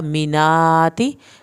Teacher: मीनाती खड़ी ज़बर खींच के पढ़ें ताकि ज़ेर को ना खींचे